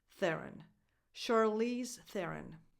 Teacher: The last O is just a schwa, because the stress, again, goes on the.